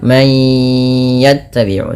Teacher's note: masukkan bunyi suara nun kepada huruf ya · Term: idgham bi gunnah